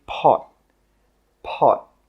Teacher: we stop the air with that final T sound